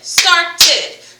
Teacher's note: when you hear the whole ed sound, it is another vowel sound. So you're creating another syllable. So start, ed, ed, started.